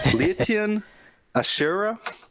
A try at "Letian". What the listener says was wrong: Sure, Latin. I was saying Latin when I was commentating. Latin. Silent. The E is silent. It's there for looks.